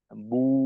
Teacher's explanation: আমরা একেবারে ঠোঁট গোল রেখে পুরো টান শেষ করব। যেমন মনে করেন বু, এই যে বু, বা ওয়াও পেশ এর উচ্চারণটাকে আমি যতটা সময় নিয়ে করলাম, পূর্ণ সময়টা আমাদের ঠোঁটের অবস্থা একই রকম থাকবে, এখানে অবস্থার কোনো পরিবর্তন হবে না। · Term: ওয়াও এর মাদ